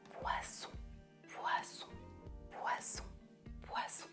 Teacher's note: si je chuchote, je ne peux pas faire la différence entre le S et le Z.